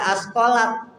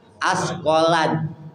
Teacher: Yang ketiga tak mati bertemu dal, nggak dibaca askolat, tapi dibaca askolan, hilang tuh taknya, masuk ke dalam dal.